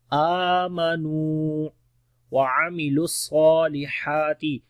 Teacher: نون کو لمبا کریں گے، واو مدہ ہے آمنوا وعملوا الصالحات، عین کو گلے کے درمیان والے حصے سے پڑھیں گے ، لام کو ڈائریکٹ صاد کے ساتھ